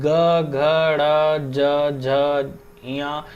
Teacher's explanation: इन सब में हम देख रहे हैं कि हाँ वाइब्रेशन हो रहा है ना, ग घ, है ना, वाइब्रेशन एक हम महसूस कर पा रहे हैं, वाइब्रेशन हो रहा है। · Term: घोष व्यंजन